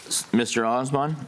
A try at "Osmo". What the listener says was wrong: Close, 3 syllables, Oz-A-Mo. Like the Wizard of Oz, Oz-A-Mo.